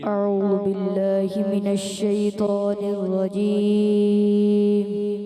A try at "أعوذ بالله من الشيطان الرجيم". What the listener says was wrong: اعوذ باللہ ذال کی پیش کو کلیئر کرنا ہوتا ہے. اعوذ, دوبارہ پڑھیں.